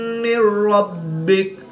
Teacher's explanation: نون ساکن کے بعد را حروف یرملون میں سے ہے تو یہاں پر ادغام بلا غنہ ہوگا یعنی غنہ نہیں کریں گے۔ با حروف قلقلہ میں سے ہے اور یہ مشدد ہے تو یہاں پر ہم قلقلہ کبرا کر کے پڑھیں گے۔